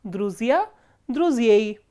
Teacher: So, druzia, ya is stressed, which is the ending. If the ending is stressed, we do not write a soft sign here.